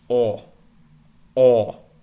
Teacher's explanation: we say oh we almost have 0 & W put together Oh in Russian it's not a diphthong it's just or or you don't pronounce a w or a whoop sound at the